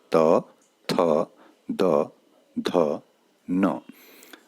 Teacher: दंत्य, दांतों की सहायता से जिनका उच्चारण होता है